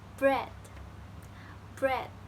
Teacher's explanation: when you say it your mouth is in between close and open so your mouth is in the middle